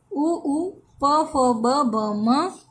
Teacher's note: इन वर्णों का उच्चारण दोनों होठों से होता है, अतः ये ओष्ठीय वर्ण कहलाते हैं